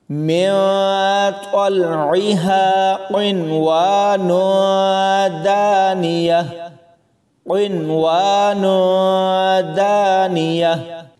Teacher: اس میں واو سے پہلے نون ساکن ہے لیکن یہاں بھی ادغام نہیں ہوگا